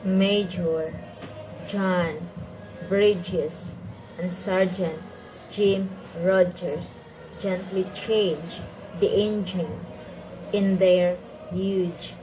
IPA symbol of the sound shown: dʒ